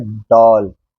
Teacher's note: यह ध्वनि क्या होती है अ का उच्चारण देख लो पहले आ और ओ इनके बीच का कहीं है ये